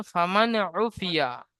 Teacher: নুন সাকিনের পরে হুরফে হালকি 6টি অক্ষরের মধ্য থেকে আইন এসেছে, তাই নুন সাকিনের আওয়াজকে বিনা গুণায় জাহির করে তাড়াতাড়ি পড়তে হবে, টান দেওয়া নিষেধ। আইনের উপরে পেশ আছে, পেশটি হলো হারাকাত, হারাকাতকে তাড়াতাড়ি পড়তে হবে, টান দেওয়া নিষেধ।